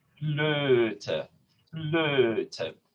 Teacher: So here it is a tongue, it's a mixed vowel, so it's a tongue that's in an E, close E position. And we just round the lips into an O position. Flöte. So I'm just, it's an A plus an O sound.